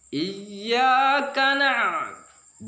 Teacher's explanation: Kadang-kadang kita memang kelemahan kita sampai ya cukup dengan mengenakan ain itu di tenggorokan yang ada tekanan. Iyyaka na'budu, yang sederhana saja, jangan terlalu berlebihan.